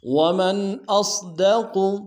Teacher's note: ومن میں میم کو نون ساکن کے سامنے آنا ہے، یہاں پہ اظہار کریں گے